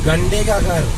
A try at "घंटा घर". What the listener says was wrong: Not घंटे. It's घंटा.